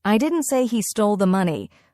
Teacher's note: Flat tone, no expression